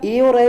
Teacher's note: ए और ए जो होता है वो कंठ प्लस तालु से बोला जाता है